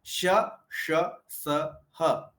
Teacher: मुख से जो हवा निकलती है वो घर्षण करते हुए निकलती है। कहीं से टकराते हुए निकलती है। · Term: उष्म व्यंजन